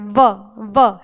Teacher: जब तक आप दांत को होठ से नहीं मिलाओगे तो व का उच्चारण नहीं करोगे। ब बोलोगे फिर आप। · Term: दंतोष्ठ